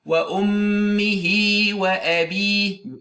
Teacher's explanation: this linking mad is called mad sila sughra if the letter coming after the ha is not hamza, and you lengthen it for 2 units of time